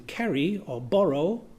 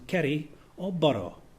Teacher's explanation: Another example can be found in British English, where the R between two vowels can be realized in two ways. We normally use the alveolar approximant as in carry or borrow, but in a somewhat posh way of speaking English, we can also use the alveolar flap as in carry or borrow.